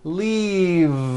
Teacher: Keep the voicing going throughout the whole word and voice the V. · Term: voiced V